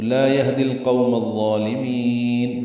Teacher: میم کو الظالمین کے ضاد سے ملا دیں گے، ادغام شمسی ہوگا. القوم میں لام پڑھا جا رہا ہے، الظالمین میں یہ لام الف لام نہیں پڑھے جا رہے